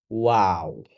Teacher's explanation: ওয়াও যখন আপনি বলবেন, আপনি নিশ্চিত করবেন যে আপনার ঠোঁট গোল করা হয়েছে। ওয়াও! আপনি স্ক্রিনে দেখতে পাচ্ছেন ঠোঁটটা এভাবে করে গোল থাকতে হবে।